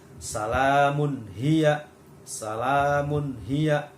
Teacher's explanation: Di situ ada tanwin atau dumatain bertemu dengan ha. Jadi membacanya harus jelas.